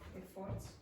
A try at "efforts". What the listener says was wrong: Okay, it's not efforts, it's efforts. Okay, so again we have that issue with pronouncing all the syllables equally.